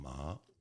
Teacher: ma, second tone. That's like you're asking a question. Ma. Okay, she said, raise your eyebrows, and you'll get it.